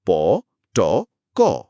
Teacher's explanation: সেটাই হলো তৃতীয় প্যারামিটার, ম্যানার অফ আর্টিকুলেশন। বাতাসটা কি পুরোপুরি আটকে গিয়ে হঠাৎ একটা ছোট্ট বিস্ফোরণের মতো বের হচ্ছে? যেমন প বলার সময় হয়। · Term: স্টপস বা প্লোজিভস, স্টপস বা ক্লোজেস